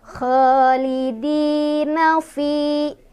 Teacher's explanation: kasroh bertemu dengan ya sukun, dibaca panjang 2 harokat. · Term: mad tabi'i